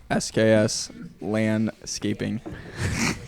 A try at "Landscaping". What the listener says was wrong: LAN or LAND? It sounded like you said LAN, like LAN. Land. With a D.